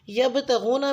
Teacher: यबतगूना में बा साकिन पे लाइट कलकला होगा।